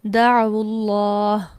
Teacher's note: پہلے ساکن کو ضمہ دے دی، اسے پیش دے کر پڑھا گیا